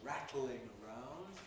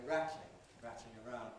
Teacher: You can say it was rattling around, 3 syllables, rattling, or you can say rattling, rattling around, 2 syllables. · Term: compress